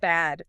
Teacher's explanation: bad uses a forward front vowel, the A sound.